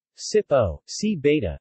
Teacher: The phoneme P becomes beta, not B. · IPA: [ˈsiβɔŋ]